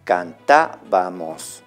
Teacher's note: contando las sílabas de atrás para adelante, sería la tercera, donde está la mayor elevación de voz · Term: esdrújulas